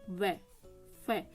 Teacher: आपके जो दांत है वो नीचे वाले होट पर अटैक कर रहे हैं ना